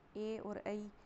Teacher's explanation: ए और ऐ का उच्चारण स्थान कंठ तालु और ध्वनि कंठ तालव्य।